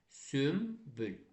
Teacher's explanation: M-ya çevriləcək. Yəni N samiti Bdan M-dan, P-dən əvvəl gələndə N M kimi tələffüz olunacaq